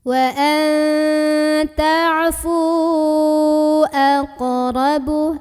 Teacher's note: Maka fu yang baris dhammah ini ya, fa yang baris dhammah ini kita panjangkan, boleh 4 boleh 5 harokat. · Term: mad tabi'inya